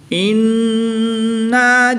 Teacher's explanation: نون مشدد میں ہمیشہ غنہ ہوتا ہے اور اس میں غنہ آنی کر کے پڑھیں گے